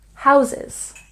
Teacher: we have stress on the first syllable in houses